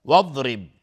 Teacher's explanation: را ترقیق است چون کسره داره